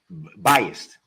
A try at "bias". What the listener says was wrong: Bias? No, bias, B-I-A-S. There's no T at the end. Bias.